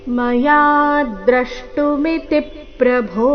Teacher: ಕೊನೆಗೆ ಭೋ ಮಹಾಪ್ರಾಣ ದೀರ್ಘ